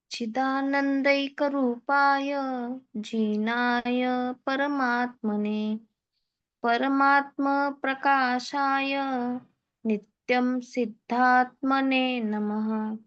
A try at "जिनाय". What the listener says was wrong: जी दीर्घ सुनाई दे रहा था इसलिए फिर से कहने को कहा।